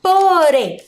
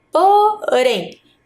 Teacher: Qual que é a sílaba mais forte? A sílaba rem.